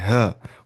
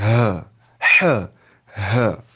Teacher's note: وہ نکالنا ہے اقصائی حلق سے، bottom of portion of throat سے